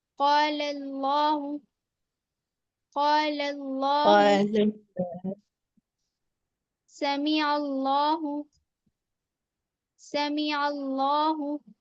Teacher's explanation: پہلا والا لام ہمیں باریک پڑھنا ہے اور بعد والا لام موٹا پڑھنا ہے · करेंगे तो आप फिर दोनों लाम को आप मोटा कर देंगे पहले वाला लाम हमें बारीक पढ़ना है और बाद वाला लाम मोटा पढ़ना है